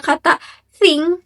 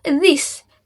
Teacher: Saat bunyi diucapkan, ujung lidah sedikit terlihat di antara gigi. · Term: dental sound